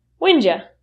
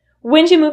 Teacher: When did you will reduce to when'ja.